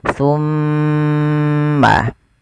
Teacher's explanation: Ketika ada mimad, maaf, mim berharakat tasydid. Cara membacanya ditahan suara mimnya. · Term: bacaan ghunah, bacaan gunnah